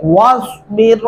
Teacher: اور یہاں بھی آپ نے دھیان رکھنا ہے کہ صاد کی جگہ سین پر ڈالتے ہیں اکثر لوگ، واسبر، ایسا نہیں پڑھنا آپ نے، واسبر، صاد پڑھتے ہوئے آپ کے ہونٹ جو ہے وہ گول ہونے چاہیے